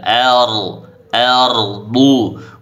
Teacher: ro sukun sebelumnya fathah dibaca tebal